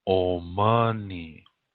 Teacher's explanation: accent on the second syllable Omani almost sounds like old money